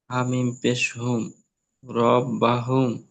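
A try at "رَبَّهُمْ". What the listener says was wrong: এ দেখেন হামিম পেশ হুম বললেন তো, ওই জায়গাটা কি হবে বলুন তো? একটু গুণনা হবে, তাই না? ওই যে মিম সাকিন আছে, মিম সাকিনের পরে কি অক্ষর এসছে একটু দেখেন।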